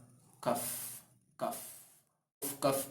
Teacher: lidah bagian tengah dihimpitkan dengan kerongkongan bagian tengah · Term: huruf Kaf